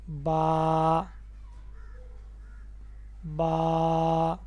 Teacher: दोनों होठों के अंदरौनी तरी वाले हिस्से को मिलाने से अदा होता है। यह ऊपर वाला अंदरौनी तरी वाला हिस्सा यह जहां पर अक्सर तरी रहती है।